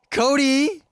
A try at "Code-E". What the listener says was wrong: It's not Cody. It's Code E, as in code, C-O-D-E, and then the letter E. Well, you said it sort of like Cody, like C-O-D-Y. It's Code E.